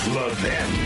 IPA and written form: ləˈvɪn (Levin)